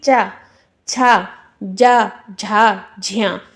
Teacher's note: इनमें भी कुछ ऐसे हैं जो आपके स्पर्श संघर्षी में आते हैं जिनमें संघर्ष करना पड़ता है · स्पर्श के साथ साथ वो संघर्ष भी करते हुए आ रहे हैं, वो आपके स्पर्श संघर्षी हो जाते हैं।